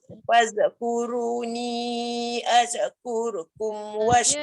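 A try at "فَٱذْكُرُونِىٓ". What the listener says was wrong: Dia tak boleh az. Fazkuruni azkurkum. Dia ujung lidah keluarkan aja. Faz, jangan faz. Dia tak boleh bunyi desiran, dia tak boleh bunyi lantunan. Fazkuru, ujung lidah. Tak boleh tu. Faz. Dia ada bunyi z tu tak boleh.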